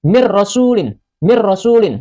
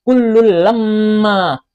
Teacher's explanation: Contoh nun mati atau nun sukun bertemu dengan huruf ro pada surah Yasin ayat ke-30. Hukum bacaannya idgham bila ghunah. Dimasukkan tanpa didengungkan. Tulisannya min rasulin.